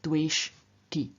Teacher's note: And in the third singular, the sh, which is a retroflex sound, makes the t, the dental of the third person singular ending t, also retroflex